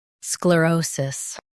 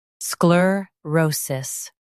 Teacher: In US, stress o. In UK, stress ro.